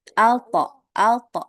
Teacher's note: Kalau mantulnya tebal itu ke huruf O ya karena dia huruf isti'la huruf tebal jadi mantulnya juga ikut tebal. Ya, mantulnya ke huruf O. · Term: qalqalah